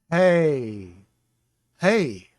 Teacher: hey uses nothing but the back of the throat. A breath. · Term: guttural